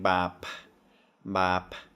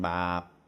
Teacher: And you notice again, I'm not saying bap, bap, I'm saying bap. So we have that sudden stop at the end.